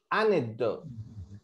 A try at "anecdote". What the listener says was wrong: No se pronuncia la E. La E al final no se pronuncia. Anecdote. Así, no se pronuncia la E.